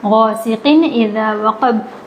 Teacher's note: آواز تنوین کی ناک میں نہیں جائے گی، ظاہر ہوگا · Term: اظہار